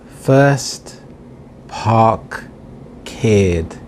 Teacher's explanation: If there is a consonant sound after the R, it is silent, as in first, park, cared.